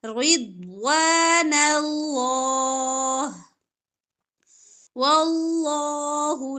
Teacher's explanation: اللہ لا موٹا پڑھیں گے زبر ہے اس سے پہلے